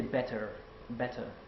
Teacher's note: when the r is at the end of the word you don't have to sound it out so harshly you can just bounce it off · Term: r sound